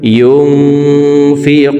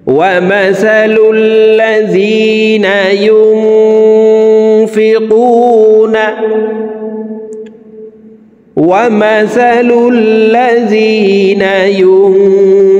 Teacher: নুন সাকিনের পরে ইকফার 15টি হরফের ভিতরে একটি হরফ ফা আসছে, এই কারণে এই নুন সাকিনকে নাকের ভিতরে লুকাইয়া গুন্নার সহিত পড়ব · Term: ইকফাহ গুন্না